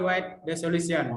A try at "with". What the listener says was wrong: With, kok white terus? White itu putih, ya. With,